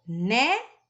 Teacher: boneca foi um exemplo de palavra que eu coloquei em que a penúltima sílaba é forte é a tônica